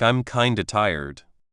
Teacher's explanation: The D sound from kind and the O sound from of join smoothly. · The D at the end of kind joins with the O sound of and the F sound is often dropped or very soft